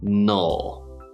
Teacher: so we start with the n sound and then just a dark l